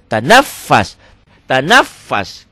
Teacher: Enggak ada yang panjang, double aja.